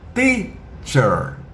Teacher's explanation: O T não tem chiado. O T é limpo, claro, cristalino, que nem o T que o nordestino fala quando ele diz titia. Esse é o T do inglês, o T limpinho, sem chiado.